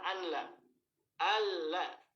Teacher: nah itu nunnya hilang sama sekali, nggak ada sifat sedikit pun huruf nun masuk ke huruf lam · Proses pengidghamannya sempurna. Jadi antara nun sukun ke huruf yang keduanya itu nanti prosesnya itu hilang seluruhnya, nun tersebut hilang, nggak ada. Nah, itu sempurna, nggak ada yang tersisa sedikit pun dari sifat huruf, nggak ada dari sifat huruf nun. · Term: idgham kamil